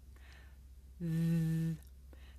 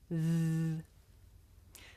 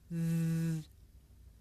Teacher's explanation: The sound comes from between my tongue and my top teeth. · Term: voiced consonant